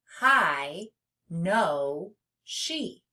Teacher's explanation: An open syllable has one vowel, and the vowel is at the end of the syllable. Nothing is closing it in, and the vowel is making a long sound. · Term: open syllables